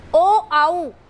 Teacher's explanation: जब हम बोलते हैं ये वर्ण तो कंठ के साथ साथ होठों का स्पर्श होता है, तो इसका उच्चारण स्थान होगा कंठोष्ठ।